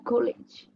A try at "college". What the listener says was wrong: college, not ko ka.